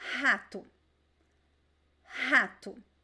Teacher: See that the strongest syllable is the first one. The second one is very weak. · The second one is very weak. The letter O, when it's placed in weak syllables, it usually sounds like a very weak U.